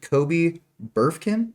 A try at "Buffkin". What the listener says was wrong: Buffkin. I don't think there's an R.